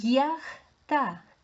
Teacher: Я у нас стоїть попереду, тому знову позначає два звуки. Звук й і звук а. Й у нас завжди м'який.